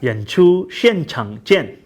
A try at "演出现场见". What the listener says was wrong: And there's that X thing again, how, you know, because he's a Westerner and he hasn't really studied Chinese, he's not pronouncing the X words correctly. It was like 现场. So the X, the 现, it should be 现场. 演出现场见.